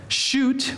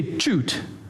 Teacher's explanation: some Spanish speakers instead of saying like shoot would say choot or shower they say Cher because they don't have an sh sound